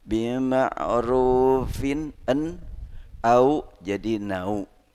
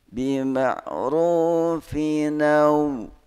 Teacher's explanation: tanwin nun sakinah menghadapi hamzah qata, dipindahkan harokat hamzah kepada suara nun, baik nun sakinah ataupun tanwin